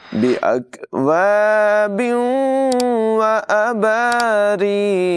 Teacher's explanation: तनवीन के बाद वाव हुरूफ़ यर मालून में से है, मिलाकर और गुन्ना करके पढ़ेंगे। रा की आवाज़ बरीक होगी और क़ाफ को पुर पढ़ेंगे।